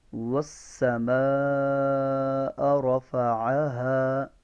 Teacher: یہ والسماء کی جو مد ہے نا اس مد کو 5 الف لمبا کرنا ہے ہم نے